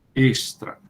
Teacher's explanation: Extra tem que ser com o som do é fechado · Dependendo, porque às vezes o S antes do T costuma ficar com esse som mais ch. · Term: E fechado